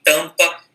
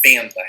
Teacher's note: esse M e N servem apenas para nasalizar a vogal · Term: vogais nasais